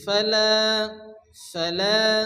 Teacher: এখানে আলিফ মাদ্দা এক আলিফ পরিমাণ টান দিয়ে পড়তে হবে